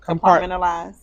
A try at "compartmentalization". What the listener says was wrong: Zation. Put the zation on the end.